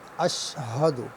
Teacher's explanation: اشہد، شین کی آواز آئے گی، شین کے بعد ہا ہے، حروف حلقی میں سے ہے تو حلق سے آواز آئے گی